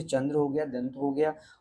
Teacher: नाक से अधिक और मुख से कम वायु निकलती है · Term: अनुस्वार